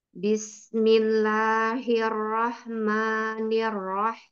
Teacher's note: bismillahnya bagus dia ringan tipis semua hurufnya kecuali yang lam jalalah